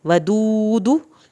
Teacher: दाल के साथ जो वाव साकिन आया है उसकी वजह से खींचा गया है